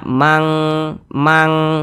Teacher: tuh lebih tinggi kadar dengungnya jadi dia lebih condong berbunyi Eng Jadi kalau nun sukun atau tanwin berjumpa dengan qof atau Kaf dia condong berbunyi Eng